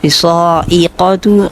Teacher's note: قاف کو صحیح مخرج کے ساتھ موٹا ادا کرنا ہے